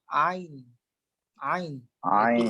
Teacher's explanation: Keluar huruf ain ialah pada pertengahan kerongkong, iaitu pada biji halkum kita. Maka kita akan tekan, atau kita kata tekanlah di bahagian pertengahan kerongkong untuk mengeluarkan bunyi ain, dan kita akan rasa kita punya biji halkum ni bergerak.